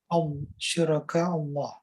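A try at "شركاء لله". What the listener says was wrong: Nah, itu nggak ada alifnya tuh. Jadi lillah bacanya.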